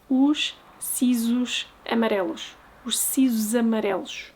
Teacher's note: Now we have a sh, a s, which actually gets camouflaged in the sh sound, a z, and a sh.